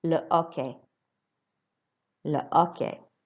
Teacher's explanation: you don't pronounce H's before vowels in French. So it's not le hockey, it's le hockey. So we don't pronounce the H at all.